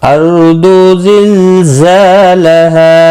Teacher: अर्दु रो साकिन से पहले ज़बर है, पुर पढ़ा जाएगा।